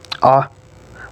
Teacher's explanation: And this is A, which is a short mid central unrounded monophthong